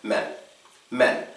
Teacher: It's much shorter, it is not stressed, and it's so fast you almost don't even need to make the E sound.